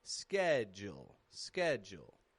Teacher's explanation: it's strong in the beginning, ske, and then jul. Goes flat and quick. And the D and U change to a J and U.